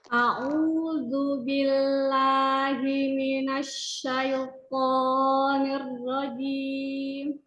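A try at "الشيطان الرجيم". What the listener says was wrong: Di situ ro-nya tasydid. Jadi tahan sedikit di ro-nya. Alirkan pada ro sukunnya baru ke fathah. Ro itu punya sifat bainiyah.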